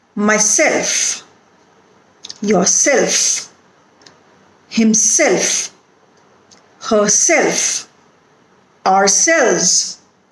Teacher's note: in reflexive pronouns, the second syllable is always stressed.